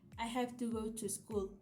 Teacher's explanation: In this sentence have go and school are the stressed words that give the true meaning to the sentence.